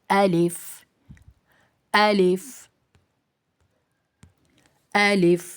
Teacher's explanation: الف ادا ہوتا ہے منہ کے خالی حصے سے